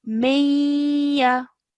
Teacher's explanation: we produce a two-second nasal sound and hold it in our nose for two seconds · So when we are joining the meme to the noon sakin and then to the ya mushaddad, we do so by merging the sounds of the noon and the ya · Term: 2-second nasal sound, assimilation